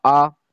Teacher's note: الف کے اوپر مد لگا ہوا ہے یعنی الف کھینچ کر پڑھا جائے گا